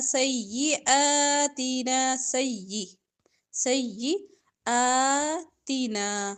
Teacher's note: حمزہ کے اوپر کھڑی زبر لمبا کریں گے